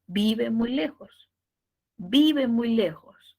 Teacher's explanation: Siempre baja, un poquito, baja. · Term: tono descendente